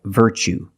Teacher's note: You see t u e as the second syllable. So the t is pronounced ch like chicken.